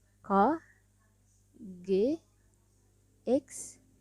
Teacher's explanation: konsonan yang dihasilkan oleh belakang lidah sebagai artikulator dan langit-langit lembut sebagai artikulasi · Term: dorsovelar